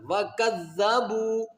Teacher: زال کے اوپر شد ہے، زال کو 2 مرتبہ پڑھیں گے، ایک اپنی حرکت کے مطابق، ایک اپنے سے پہلے والے حرف یعنی کاف کے ساتھ ملا کر